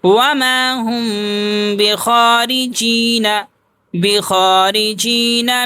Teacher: اخفا میم ساکن، تھوڑی دیر آواز کو ناک میں چھپاتے ہیں